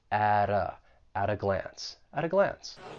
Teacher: that t in at, I'm going to pronounce it with a flap t. And then I will link it with the vowel sound in uh, that article.